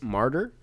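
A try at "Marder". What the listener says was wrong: Martyr, it's Marter. D-E-R, martyr. But it's not martyr like the religious like. it's not that.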